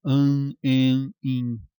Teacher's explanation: se a gente baixa o verde um pouquinho, que é o véu palatino e a úvula, passamos a produzir também um som nasal